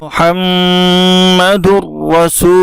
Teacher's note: दाल का रा में इदगाम होगा और ये इदगाम बिला गुन्ना होगा, इसलिए कि तनवीन के बाद रा है, इसलिए इसको मिला करके बिला गुन्ना के पढ़ेंगे।